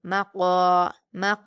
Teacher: काफ पर अलिफ मद्दा है। इसको दो हरकात खींच कर पढ़ेंगे और पुर पढ़ेंगे। · قاف پر الف مدہ ہے، اس کو 2 حرکات کھینچ کر پڑھیں گے اور پر پڑھیں گے